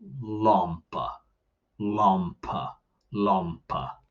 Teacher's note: remember the vowel at the end as um is a schwa so it's it's a lazy Bell you just make that a